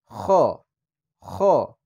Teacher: গলার শেষ ভাগ অর্থাৎ থুতনির নিচে গলার যেখানে শেষ প্রান্ত, এখান থেকে হবে